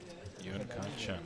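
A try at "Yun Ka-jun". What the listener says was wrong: Yun Gajun. Jun. J. With a J.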